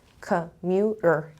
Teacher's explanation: Where is the stress? Commuter. It's on the second syllable.